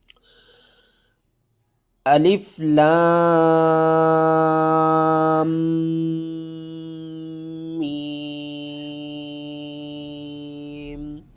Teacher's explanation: درمیان میں آپ نے سانس کو نہیں توڑنا، میم مشدد ہے تو مشدد پر ہمیشہ غنہ ہوتا ہے۔